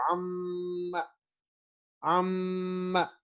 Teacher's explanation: غنہ ہوتا ہے اور نیزلائزیشن ہوتی ہے، نوز سے ساؤنڈ نکلتی ہے